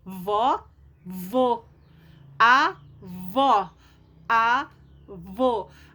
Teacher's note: A sílaba mais forte é a única, a última. Por isso que ela é oxítona, ok? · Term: sílaba tônica